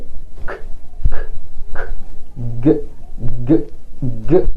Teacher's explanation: اصوات تخرج ما بين the back of the tongue and the velum او the soft palate، اللهاه او الجزء المرن من مؤخرة سطح الفم. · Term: velar sounds